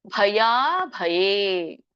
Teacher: ಭ ಎರಡು ಮಹಾಪ್ರಾಣ ಇದೆ, ಯಾ ಎರಡು ದೀರ್ಘ ಇದೆ